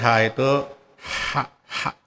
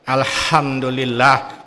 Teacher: ha ini artinya lah dikeluarkan di tenggorokan paling ini di sini.